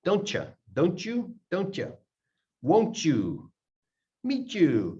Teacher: When you've got a T here and a Y at the beginning, you end up with a CH sound. · T and the Y smash together. Ch. Don't you.